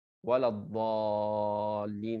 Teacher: Artinya, contohnya misalnya saya membaca waladhdallin dengan 6 harakat. Artinya saya membaca ya dengan 6 harakat. Apa itu 6 harakat? Artinya seperti saya mengucap ya satu huruf berharakat diulang 6 kali.